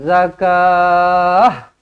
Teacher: ta marbutah bila kita berhenti macam mana cara dia kita tukarkan tamarbutah itu menjadi huruf ha